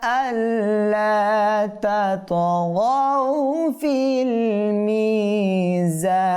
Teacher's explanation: ত হরফে কলকলা সাকিন হয়েছে, কম্পন সৃষ্টি করতে হবে